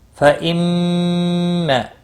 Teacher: میم مشدد پر غنہ ہوا، یا حمزہ ساکن کو تھوڑا جھٹکے کے ساتھ پڑھنا ہے۔